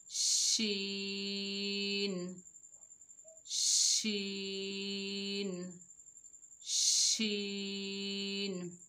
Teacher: शीन की अदायगी में ज़बान के दरमियानी हिस्सा को ऊपर तालु से लगाएं। · शीन बारीक हरूफ भी है और शीन की आवाज़ फैलती हुई महसूस होगी।